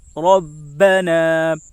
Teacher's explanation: را کے اوپر زبر ہے اس لیے را پر ہوگی. با کے اوپر تشدید ہے، تشدید والے حرف کو 2 مرتبہ پڑھتے ہیں، ایک بار پہلے والے حرف سے ملا کر اور ایک بار خود اسے.